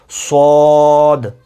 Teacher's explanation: صاد کو ہم نے موٹا پڑھنا ہے، منہ گول کر کے، منہ کو گول کر کے آپ نے موٹا پڑھنا ہے، صاد۔ اور اس کی آواز آخر میں دال کی آواز نکلے گی، جسے آپ پڑھیں گے صاد۔